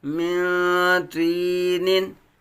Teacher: میم متحرک نون ساکن کے بعد حروف اخفا میں سے تو آیا ہے اخفا کا قاعدہ ہوگا یعنی گناہ کریں گے